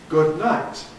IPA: ˌgʊd ˈnaɪt